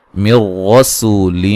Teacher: یہاں نون ساکن کا ادغام ہے بلا غنہ